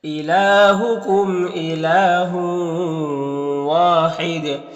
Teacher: یہاں پر وقف کریں گے تو دال میں قلقلہ ہوگا